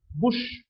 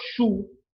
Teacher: its voiceless because my vocal cords are held apart from each other when the air passes through there is no vibration the vocal chords post alveolar the tip of the tongue touches